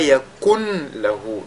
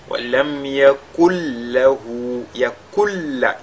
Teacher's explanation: Donc on ne dira pas yakun lahu. Le nun ne sera plus perceptible, on ne va plus entendre le nun. Mais ce nun, n'est-ce pas, il va entrer totalement dans la lettre lam. · Mais ce nun, n'est-ce pas, il va entrer totalement dans la lettre lam. Et cette lettre lam, elle est doublée et c'est ce qu'on doit ressortir, c'est-à-dire le caractère ou l'aspect doublé de cette lettre lam là. · Ce qu'on a appelé également idgham kamil, donc idgham total. Le nun, la lettre nun sakina ici fusionne totalement dans la lettre lam qui la suit.